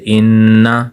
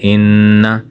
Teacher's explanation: آگے تیسری لائن میں لکھا ہے نون مشدد کی مثال جیسے ان، یہاں ہم دیکھیں کہ دوسرا حرف نون ہے اور اس پر شد کا نشان ہے، یہ نون مشدد ہے، یہ علامت ہے کہ اس میں غنہ کر کے پڑھیں گے